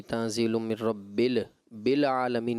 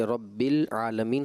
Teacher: यानी गैर कलकला में कलकला कर दिया